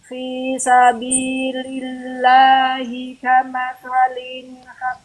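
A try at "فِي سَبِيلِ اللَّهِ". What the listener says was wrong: enggak pakai tanwin itu bukan tanwin ya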